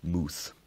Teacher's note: it preserves the monophthong vowel in words like mouth from middle english and old english